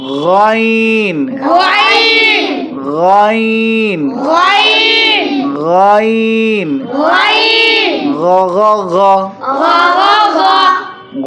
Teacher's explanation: কণ্ঠনালী শেষের থেকে এটা উচ্চারিত হয় গাইন